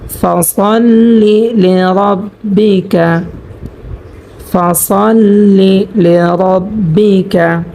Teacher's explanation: তো এখানে আমরা কিন্তু পেয়েছি রর উপরে জবর, সেজন্য আমরা এখানে রকে পুর করিয়া অর্থাৎ মোটা করিয়া পড়ব